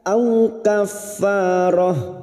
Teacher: Balighal ka'bati, ka'bati huruf ain tawassut dan jahar, ka'bati au kaffarah, au fathah bertemu sukun kita lunakkan